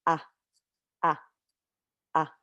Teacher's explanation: Hamza is going to have that little break sound.